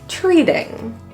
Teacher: In the word treating, the middle T is actually pronounced as a flap T. Kind of sounds like a really, really quick D sound.